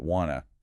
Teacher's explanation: The T sound at the end of want tends to disappear when to follows it, and the vowel in to reduces. So you get wanna.